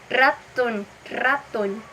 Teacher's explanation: o r no é super vibrante